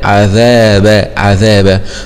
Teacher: مخرج الذال طرف اللسان مع أطراف الثنايا العليا